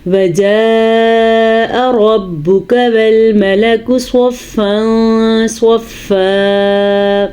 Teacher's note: یاد رکھیں یہ والی مد 5 الف کے برابر ہے اور یہاں پہ صاد کو پر پڑھیں گے, صاد کو پر پڑھیں گے اور اخفا کا قاعدہ ادا کریں گے · وَجَاءَ میں مد کو ادا کریں گے. یاد رکھیں یہ والی مد 5 الف کے برابر ہے